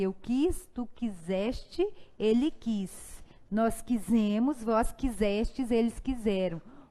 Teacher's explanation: esse S tem muito som de Z. Dá até vontade de tacar um Z, mas é sempre S.